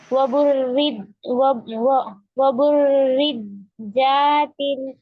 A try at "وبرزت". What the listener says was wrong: جاتے وبرزت دیکھیے حرکات ہے نا، کھینچیں گے نہیں. اب دیکھیے وبرزت الجحیم لمن یرا، برزت الجحیم لمن یرا، ٹھیک ہے.